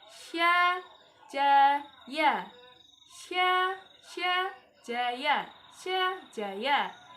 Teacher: lidah di bagian tengah yang menekan langit-langit atas